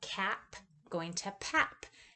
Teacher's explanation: in expectation of the P at the end of the word, they change the K at the beginning to another P, another bilabial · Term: regressive